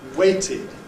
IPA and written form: ˈweɪtɪd (waited)